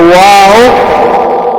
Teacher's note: واؤ غیر مدہ جس جگہ سے میں نے آپ کو بتایا با میم یعنی ہونٹوں سے، واؤ غیر مدہ ہونٹوں سے ادا ہوتا ہے، یعنی ہونٹوں کو جب گول کریں گے اور بیچ والا حصہ خالی ہوگا. جس طرح واؤ ہونٹوں کو گول کریں گے تو واؤ غیر مدہ ادا ہوگا.